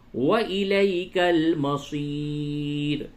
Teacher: یہ یا ساکن سے قبل زبر ہے، یہ یا لین ہے، نرمی سے بولیں گے